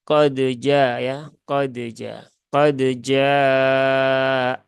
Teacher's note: dia harus dibaca dengan izhar maka tunaikan sifat-sifat yang menyertai huruf Dal secara sempurna ya qalqalahnya ya syiddahnya